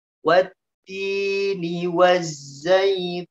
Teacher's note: Ya, tidak boleh za ini dialirkan nafasnya karena za ini memiliki sifat sofir, suaranya yang mendesir ya, suaranya yang mendesis ya